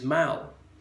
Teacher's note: There you have a short, sharp A, a falling A, as in Pall Mall.